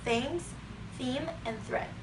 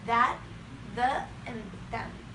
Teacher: The tips of the tongue is placed behind the top front teeth. The friction occurs between the top of the tongue and the top front teeth.